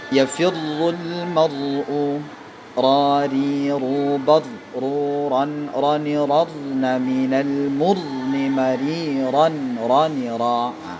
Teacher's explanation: Ra tidak lebih getarannya dari 2. Tidak boleh lebih dari 2 getaran ya. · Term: huruf ra